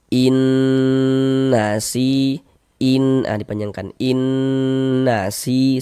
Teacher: Karena dia masuk melembur ke huruf nun. Kemudian dighunahkan atau didengungkan. Jadi, di bagian in-nya itu suaranya itu kita tahan, kita panjangkan sejenak ya. ee kira-kira sepanjang dua harakat.